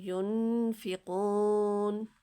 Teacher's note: نون ساکن کے بعد فا لہٰذا یہاں پہ اظہار ہوگا، اور تھوڑا سا نون کو واضح کر کے ہم 1 سیکنڈ تک اس کو کھینچیں گے